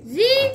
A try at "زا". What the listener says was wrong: زا پر سیدھی نکال نہیں سخت نہ کرو زی نو